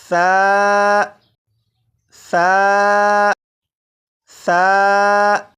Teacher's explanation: सा को मैंने नरमी से पढ़ा, यानी सीटी की आवाज़ के बगैर पढ़ा। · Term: नरमी से पढ़ना